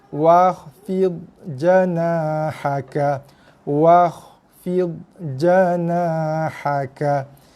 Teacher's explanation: Kita tidak membunyikan langsung hamzah wasal. Kerana hamzah wasal ataupun alif topi ni sekiranya ia berada di tengah-tengah ayat, okey, ataupun di tengah-tengah kalimah macam ni, di tengah-tengah bacaan, dia tidak ada fungsi langsung pada bacaan.